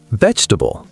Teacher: Vegetable, 4 syllables become 3, vegetable.